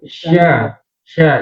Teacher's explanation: Huruf shin. Berarti kalau shin itu lidahnya agak mundur sedikit ya